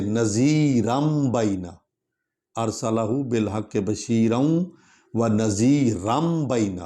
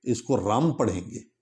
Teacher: اس کو رم پڑھیں گے کیونکہ آگے با آ رہا ہے